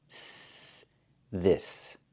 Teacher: the S makes a real S sound with no vibration